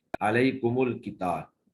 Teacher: اگر میم جمع جو ہے وہ ساکن سے پہلے ہو تو اس کو تمام قراء جو ہیں وصلاً ضمہ دے کر پڑھیں گے بغیر صلہ کے